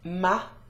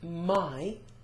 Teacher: a is a monophthong, it's a single vowel, whereas I is a diphthong.